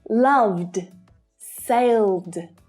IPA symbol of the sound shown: d